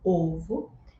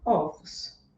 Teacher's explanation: no singular, eu utilizo esse O fechado, ovo, e no plural, ovos.